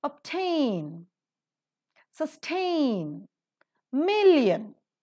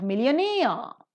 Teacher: million the first syllable is accented but millionaire the second syllable is accented